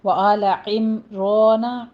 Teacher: عین وسط حلق سے ادا کیجیے اور میم کو سٹاپ کرنا ہے، میم کے اوپر قلقلہ نہیں کرنا، میم میں اظہار شفوی ہو رہا ہے، یہاں پہ میم ساکن کا قاعدہ۔